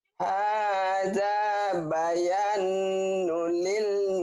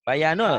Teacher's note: Bayanul, bukan bayanun. Bayanul, ini idgham.